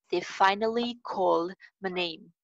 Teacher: L sound आ रही है. इसको मोटा करके बोल रहे हैं